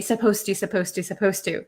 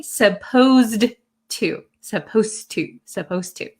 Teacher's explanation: the D sound and the T sound become kind of like one sound. So when I speak supposed to, it doesn't sound like there's a D.